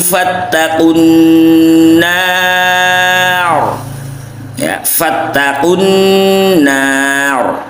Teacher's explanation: kesalahannya adalah jika nunnya ikut tebal, ikut tafkhim, jadi tidak boleh, harus nunnya tetap tarkik, roknya tafkhim karena waqaf.